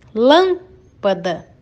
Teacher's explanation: a sílaba lan é pronunciada com mais força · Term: proparoxítona